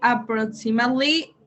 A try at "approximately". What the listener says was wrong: Yes, approximately. You don't pronounce the E. Approximately.